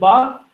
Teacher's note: Second one is voiced ba, that is voiced bilabial, plosive.